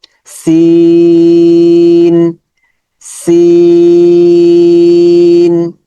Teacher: সিনের মাখরাজ হচ্ছে জিহ্বার আগা সামনের নিচের দুই দাঁতের গোড়া, ওই যে জায়ের মতোই।